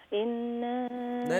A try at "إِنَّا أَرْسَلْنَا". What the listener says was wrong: नहीं गुन्ना गुन्ना। इन्ना अरसलना